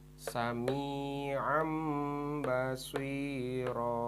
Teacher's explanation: maka nun mati dan tanwinnya itu berubah bunyinya menjadi huruf mim ya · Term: iqlab